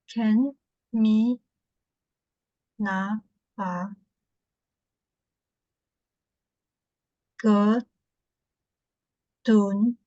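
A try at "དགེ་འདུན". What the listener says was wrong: Gen, it's one word, gendun.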